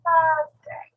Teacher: So notice that I don't pronounce the R.